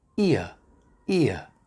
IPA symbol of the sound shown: ɪə